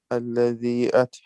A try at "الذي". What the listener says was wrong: No, prolong.